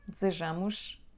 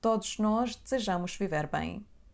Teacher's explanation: Desejamos, não ouvimos a letra E. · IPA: /d'z'ʒamush/